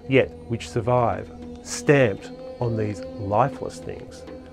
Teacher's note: Shelley emphasizes the word stamped, using again a stressed, unstressed trochee.